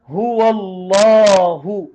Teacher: لام کے اوپر کھڑا زبر ہے، ایک الف کے برابر لمبا کر کے